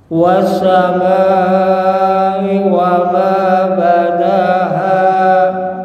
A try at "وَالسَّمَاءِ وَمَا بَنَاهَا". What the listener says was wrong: Nah, diulang lagi coba Pak. Tasydidnya diperjelas. Wassama. Ditahan lagi. Wassama.